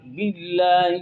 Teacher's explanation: تو مننا میں نون کا مشدد غنہ ہے، نا میں الف مدہ ہے، آمنا باللہ، باللہ میں اللہ کا لام باریک ہے، کیونکہ اللہ کے لام سے پہلے با کے نیچے زیر ہے